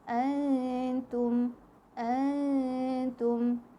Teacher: ikhfa hakikinya terdapat pada yang tulisan warna hijau ni. Nun sakinah, nun mati, nun sukun berjumpa dengan ta. Kita kena dengung 2 harakat.